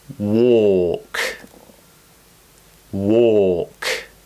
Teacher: it's more of a round shape with the mouth the tongue is the same height so it's in the middle of the mouth but it's going back towards the throat